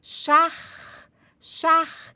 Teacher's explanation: Então, esse CH vem aqui do fundo da garganta.